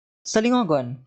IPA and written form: salɪˈŋɔɡon (salingogon)